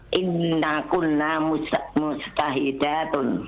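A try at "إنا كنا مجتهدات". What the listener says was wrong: Inna kunna, jangan dipanjangkan nanya.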